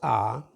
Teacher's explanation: So if you pronounce R, the tongue is just sit in the middle. It is retracted a bit, the mouth is open, the tongue retracted a little bit, and then the tongue stays in the inside. Just it doesn't touch the soft palate.